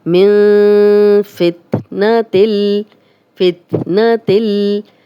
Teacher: नून साकिन है, आगे फ़ा आ गया, फ़ा हरूफ हल्की में से नहीं है तो यहाँ हम गुन्ना कर रहे हैं